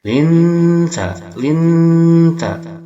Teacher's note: Dalam arti kesamarannya itu dekat, maka lebih dominan samarnya, sedangkan dengungannya tidak dominan, maka dia lebih mendekati N bunyinya, samarnya mendekati N, tidak terlalu berdengung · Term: ikhfa aqrab